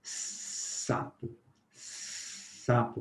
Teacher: Sapo, percebe que nós obstruímos, nós fechamos um pouquinho a saída do ar, e o S fica fricativo. O mesmo acontece com a faca, né?